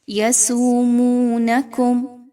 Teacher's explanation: دونوں واو مدہ کی مثالیں ہیں، دونوں کی مقدار سیم رکھیے، ایک کو لمبا یا ایک کو کم نہیں پڑھنا۔ میم ساکن کے بعد سین کا حرف آ رہا ہے، یہاں پر اظہار شفوی کا قاعدہ فالو کیجئے، کسی طرح کا میم ساکن پر غنہ نہیں کرنا۔